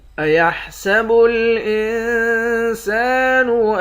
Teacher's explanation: نون پر اخفا کریں گے، سین کے بعد الف ہے، الف حرف مدہ ہے، 1 الف کی مقدار کھینچیں گے۔ لام کو تشدید والے نون کے ساتھ ملا کر یہاں ادغام مع الغنہ کریں گے۔